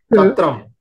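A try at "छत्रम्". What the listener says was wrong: Chatram. Again, Mahaprana syllables are not very clear. Alpha Prana only is coming.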